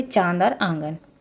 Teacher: ऐसे स्वर जिनका उच्चारण नाक और मुंह दोनों से होता है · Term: अनुनासिक